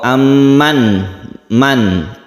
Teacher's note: tidak dimasukkan ke huruf berikutnya tapi jelas suaranya itu berbunyi n atau aman Man n-nya itu jelas itu artinya izhar halqi · Izhar artinya jelas, suara dari nun mati itu jelas, tidak dimasukkan ke huruf berikutnya, tapi jelas suaranya itu berbunyi n